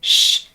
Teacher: elevate your tongue a little bit just behind that alveolar ridge the tongue comes close to the palette but there's no full closure what we can hear is the air friction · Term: fricative